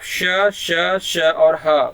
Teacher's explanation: और उस व्यंजन उसको कहते हैं जब हम थोड़ा सा अपने जीभ को गोला कर लेते हैं और हमारे मुख से जो सांस है रगड़ कर बाहर निकलती है, उसे हम उस व्यंजन कहते हैं।